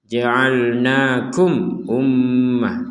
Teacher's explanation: mim sukun bertemu Hamzah kita harus membaca dengan jelas